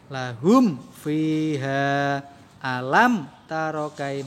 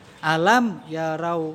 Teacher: mimnya disuarakan dengan terang, jelas dan tanpa dengung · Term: izhar syafawi